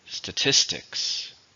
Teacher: numbers it's a noun how many syllables are in statistics three stresses on the second syllable